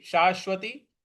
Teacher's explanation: शा के बाद जो बड़ा वाला श है उस पर हमको बल देना है